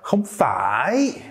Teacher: if you want to add like a much more intense sort of rejection, it could be more like không phải, where you really draw out the ending there